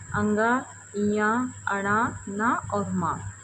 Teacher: इसी प्रकार देखिए स्व स्थानेन स नासिक्या वर्णा। यानी कि अपने स्थान के साथ-साथ नासिका से बोले जाने वाले वर्ण